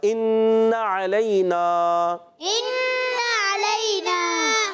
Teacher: اب یہ الف کے ساتھ نہیں ہے تو ان، نون میں غنہ کریں گے مگر آپ کھینچیں گے نہیں، یعنی نون کی زبر کو نہیں کھینچیں گے.